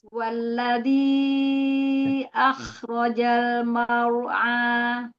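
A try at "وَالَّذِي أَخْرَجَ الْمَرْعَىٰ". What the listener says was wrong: Huruf ro-nya dijelaskan lagi. Mar'a. Ya, jangan dibuka.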